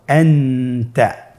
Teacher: নুন সাকিন অথবা তানবিনের পরে ইকফার 15টি হরফের যে কোনো একটি হরফ আসলে তাহলে নুন সাকিন তানবিনকে নাকের ভিতরে লুকিয়ে গুন্নার সহিত পড়তে হবে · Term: ইখফা